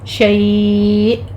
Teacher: شیء یعنی 3 کاؤنٹ کر لیں گے ہم اس کو یہاں پہ اور حمزہ پر جھٹکا دیں گے